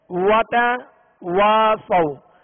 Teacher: تو واو کا مخرج کیا ہے؟ دونوں ہونٹوں کی گولائی. وتواصوا، جب اس کی زبر پڑھیں گے تو آواز اور منہ کھول دیں گے.